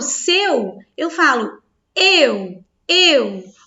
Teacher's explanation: O E é forte, que é a minha vogal, e o U é a minha semivogal